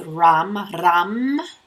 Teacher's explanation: The solar plexus, third chakra, is ram. It's a rolled R.